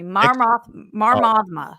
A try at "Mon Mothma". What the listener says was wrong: Mon, M-O-N. Yeah, Mothma. I don't know if you need to do the big stretch at the end there. Mothma. I don't think you need to do that. Say it fast.